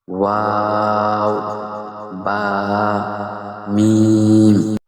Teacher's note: দুই ঠোঁট হইতে উচ্চারিত হয়